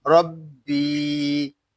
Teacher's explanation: را کے اوپر زبر ہے، را کو ہم پر پڑھیں گے. با یا زیر بی، ربی، یہاں مد منفصل ہو رہا ہے.